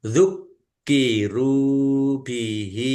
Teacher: Kafnya ada tasdidnya dibaca dobel ditekan dan ditahan biar tampak dobelnya.